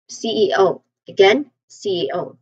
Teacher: The primary stress is on O.